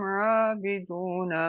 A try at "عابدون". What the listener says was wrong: تھوڑا سا دال جو ہے، دال میں تھوڑی سی شدت اور آنی چاہیے.